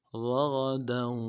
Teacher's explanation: را کو موٹا ادا کرنا ہے، غین کو موٹا ادا کریں گے